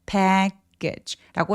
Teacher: package처럼 강세 뒤에 오는 크트프 소리들이 오면 얘를 약간 힘을 빼면서 약간 된 소리가 나게 됩니다